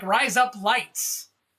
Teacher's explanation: say the word rise with the Australian vowel, which is almost like the word rice